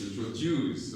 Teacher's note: The stress is on juice.